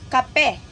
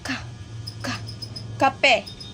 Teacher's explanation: yung tunog na K galing sa likod ng bibig. Galing sa likod ng bibig ' ba. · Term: velo